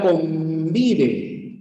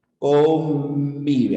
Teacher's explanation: tus labios se cierran por completo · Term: n bilabial